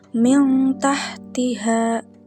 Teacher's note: hurufnya yang keluar dari rongga mulut bagian depan dekat dengan makhraj huruf nun dan bunyinya lebih samar dan juga dengung lebih jelas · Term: ikhfa akrab